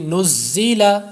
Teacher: زا میں حروف مستعلیہ تو نہیں ہے لیکن یہ صفیریہ ہے اس لیے سیٹی کی آواز پیدا ہوگی